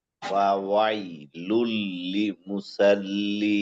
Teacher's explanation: এই মাঝের যে লামটা আছে এই লামটা তাজদিদ থাকার কারণে লাম তাজদিদ হরফ 2বার উচ্চারণ হয়। এখানে মোট লাম পাচ্ছে, দেখতে পাচ্ছি 3টা, এবং তাজদিদ থাকার কারণে একটা বেশি।